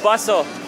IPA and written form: ˈbʌs əl (bustle)